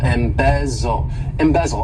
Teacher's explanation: the stress is on that second syllable, embezzle, embezzle